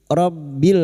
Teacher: huruf ro masuk pada huruf ba yang bertasdid